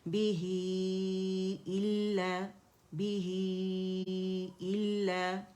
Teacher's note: ही के लिए आवाज़ नीचे जाएगी, ठीक है। और ये मैंने फिर एनालाइज किया, इल्ला को अगर आप देखें तो लाम मुशद्दद है, उसमें पहला जो है साकिन होता है और हमजा कसरा के साथ, और अलिफ मद्दा बन रहा है जब इसे खोलते हैं, ठीक है।